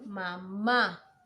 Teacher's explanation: ¿Cuál es la sílaba tónica? Ma, es la segunda ma